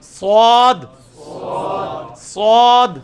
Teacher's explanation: سین کی آواز کو موٹا کیا، سواد بن گیا